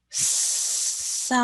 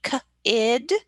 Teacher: So in this one, sun, you're less likely to hear sun, sun, because you can make this s sound much longer than the k sound in kid